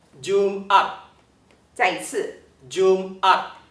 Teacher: So you can hear that there is a pause between Jum and at It’s not connected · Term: glottal stop